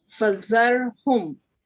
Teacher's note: Ra is strong because of fatha before it.